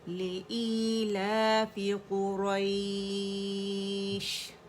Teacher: قا موٹا ہوگا, را بھی موٹا ہے, اور یہ یائلین ہے